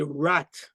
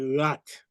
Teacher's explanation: So you see in Creole, this R sound is coming from your throat. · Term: Haitian Creole R